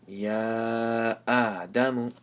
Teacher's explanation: Instead of having a Alif with a Zabar before, it has a Kari Zabar, and you stretch, and there's a Mad symbol on top, and right after that there's a Hamza in the same word. So you'll stretch it for 4 alifs. So Ya Mad Kari Zabar Ya, Hamza Kari Zabar A, that's 1 alif.